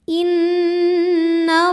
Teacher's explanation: Cara bacanya dengung, bunyi n-nya tahan sampai berasa masuk hidung. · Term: gunnah musyaddadah